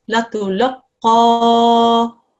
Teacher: this is a qaf mushaddad, so we have to join it with the lam that comes just before it